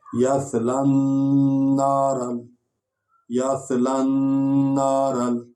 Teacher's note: پھر یہ شاد والا حرف ہے اور نون ہے، یا نون غنہ بھی کریں گے، یعنی آواز کو آپ لمبا کریں گے درمیان میں